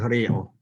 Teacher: that's sort of a schwa vowel on the end,